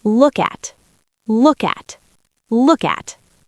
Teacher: Now link the K to the A.